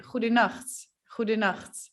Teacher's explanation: The sound is produced in my throat, and it's when you're drinking water, but you're actually gargling it, it would be like gu gu gu gu.